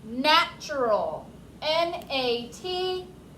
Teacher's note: Make sure you're paying attention to how it's spelled because you hear the ch sound, but there is no CH